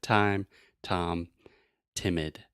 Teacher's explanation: in English to produce the true T sound we're using the tip of our tongue that means the little part and I'm pointing to the part